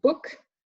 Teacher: this is a half-closed sound. It's also a back vowel, short, and the lips are rounded as well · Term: short U